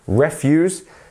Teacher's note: we have the stress at the beginning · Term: word stress